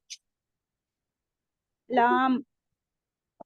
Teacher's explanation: जबान की नोक ऊपर तालू को लगने से अदा होती है।